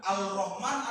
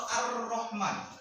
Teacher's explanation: ketika Kita mengucapkannya lafaz lam itu tidak dibaca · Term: Idgham Syamsi